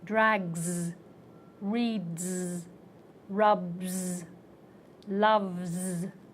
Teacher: the word ends with a consonant that has voice so the S will take voice